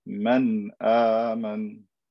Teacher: This is wrong because the hamza is far away. There's no reason to add extra ghunna. Just say the noon clearly.